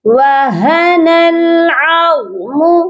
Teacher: عین کو غا کے ساتھ ملائیں گے، غا کو موٹا کر کے پڑھا جائے گا